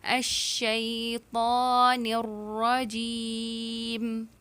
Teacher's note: الشیطان وداؤٹ غنہ, نوز سے آواز نہیں آنی چاہیے